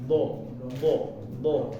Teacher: pinggir lidahnya itu ditempelin ditekan ya Adapun ujungnya cuma nempel aja enggak sampai ditekan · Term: makhrojnya